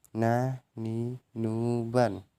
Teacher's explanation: Selanjutnya melafalkan huruf nun atau na dengan menyentuhkan lidah terdekat dengan langit-langit bagian depan